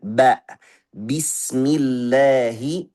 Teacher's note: Jahar itu dua pita suara kita dekat, nafasnya tidak lancar, buat gataran ketika kita membaca huruf-huruf yang bersifat jahar.